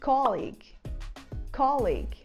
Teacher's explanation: nessa primeira sílaba, a gente usa o O aberto, que nem o O do final da palavra vovó